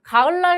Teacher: 리을과 니은이 만나면서 니은이 리을의 영향으로 리을로 바뀌는 유음화가 일어나는 거 확인해 볼 수 있죠